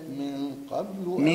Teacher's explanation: يوم يأتي بعض آيات ربك لا ينفع نفسا إيمانها لم تكن آمنت من قبل. أعمل إخفاء وفخم الغنة